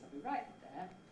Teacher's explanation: jump up, hit a high note on the right, and then get to your nucleus.